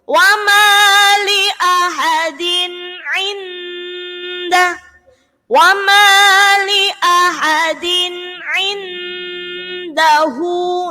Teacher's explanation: Baru ainnya baru dengung. Din ain yang pertama izhar dibaca jelas, kemudian yang kedua baru idgham dibaca dengung.